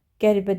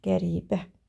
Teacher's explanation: Qəribə sözünə diqqətləndirsə, qəribə demirik. Burda i uzanır. Qəribə. Və ona görə də B variantında sait uzanması var.